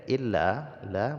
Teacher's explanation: Jaiz munfasil jadi Mad Jaiz munfasil ini panjangnya lima harakat ya mad asli bertemu dengan Hamzah di lain kalimat dipanjangkan bacaannya sampai 5 harakat